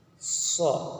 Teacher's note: ketika kita menyebutkan suara huruf so itu keluarnya di antara dari 2 gigi seri atas dan bawah.